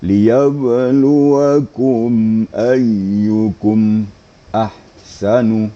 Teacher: izhar syafawi itu tidak gunah tidak dengungkan Tetapi hanya sekedar lewat saja sekedar menjelaskan mim mati